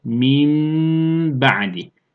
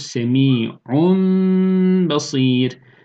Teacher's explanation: Uygulanışı, tenvin ya da sakin nun harfi önce mim harfine çevrilir. Sonra bu mim harfi ba harfi okunmadan önce hunne ile okunur. Ve 1-1,5 elif miktarı tutulur. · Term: iklab